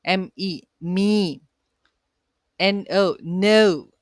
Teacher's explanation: These syllables end with a vowel sound and do not have a consonant at the end. അതായത് CODA ഉണ്ടാവാറില്ല ഓപ്പൺ സിലബിൾസിൽ. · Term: open syllables